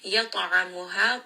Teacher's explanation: Ta here is going to be heavy. It also has qalqala, part of qutub jad. Give it a little bit of that bounce. At'amuha. Ain from the middle of the throat, and this is going to be a 4-count mad.